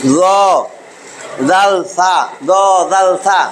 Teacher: এবার জিহ্বার আগা, জিহ্বার আগা আর আমার এই যে সামনের মাড়ির সামনের দাঁত উপরের মাড়ির দাঁত এর আগার মধ্যে লাইগা 3টা উচ্চারিত হবে। জিহ্বার আগা আর উপরের দাঁতের আগা